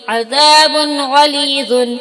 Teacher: عذاب غلیظ، عین زبر ع، زال الف زبر ذا، عذاب دو پیش بن، عذاب، غین زبر غا، لام یزل لی، غلیظ، وادو پیش بن، غلیظ، عذاب غلیظ. یہاں دو پیش کی تنوین کے بعد حروف حلقی کے 6 حرفوں میں سے غین ہے، اس لیے تنوین کو ظاہر کر کے بلا غنہ کے جلدی پڑھیں گے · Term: اظہار